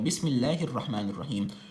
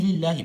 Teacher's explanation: نو دلته د الله د نوم دا چې کوم لام دی دا به باریک ویل کېږي، دا به نری ویل کېږي